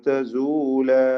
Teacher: രണ്ട് ഹറക്കത്തിന്റെ അളവിൽ തബീയ ദീർഘം മാത്രമാണ്